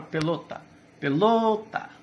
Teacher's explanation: são as paroxítonas do português a penúltima sílaba mais forte observe a palavra pelota pelota lo é mais forte certo quando · Pelota, lo é mais forte, certo? Quando você pronuncia a palavra, você percebe que a sua corda vocal força um pouquinho mais na segunda sílaba